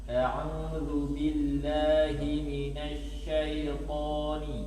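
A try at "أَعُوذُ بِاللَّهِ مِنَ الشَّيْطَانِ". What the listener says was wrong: Baik, shin tafasinya ditambah lagi. Minasyaitani aja baca. Hati-hati untuk huruf tebal ya, jangan monyong dan jangan mengarah ke monyong. Huruf-huruf tebal itu gampang kita mengingat huruf tebal itu.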